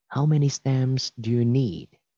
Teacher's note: Chú ý từ need, nguyên âm là âm E, kéo dài âm E ra một chút.